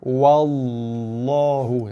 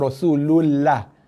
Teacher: Lam ni tebal. Okey, ingat lidah kita naik ke atas okey. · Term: lam yang tebal